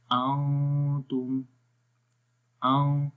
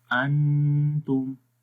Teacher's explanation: Like نون کی آواز کو ہائیڈ کرتے ہیں، چھپا کر پڑھتے ہیں، اور غننے میں کلیئر تو پڑھیں گے، لیکن اسٹل آواز ناک میں رہے گی. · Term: اخفا